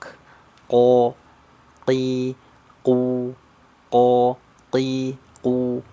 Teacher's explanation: huruf q itu keluarnya dari pangkal lidah paling belakang ya ya paling pangkal lidah paling belakang ya menyentuhnya ke langit-langit lunak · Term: huruf qaf